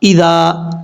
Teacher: ایک الف کی مقدار لمبا کریں گے، ذال بغیر سیدھی کے ساتھ پڑھا جائے گا۔